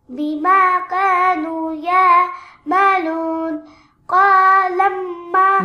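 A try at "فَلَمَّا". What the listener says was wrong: No, this is the fa. Falamma.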